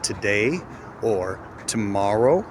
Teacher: you absolutely hear that in the first syllable we're not pronouncing the vowel. We're pronouncing something else. That something else is schwa.